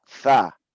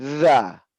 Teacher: Itu sa dengan angin yang ringan. Dengan angin yang berat saya keluarkan jadi za.